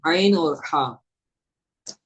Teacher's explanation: حلق کا درمیانی حصہ، اس سے دو حروف ادا ہوتے ہیں: عین اور ہا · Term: وسط حلق